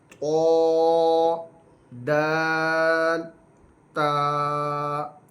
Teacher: حروف نطعیہ یہ 3 ہیں، طا، دال، تا یہ تینوں ایک ہی جگہ سے ادا ہوں گے، زبان کی نوک اور اوپر کے دانتوں کی جڑ سے ادا ہوتے ہیں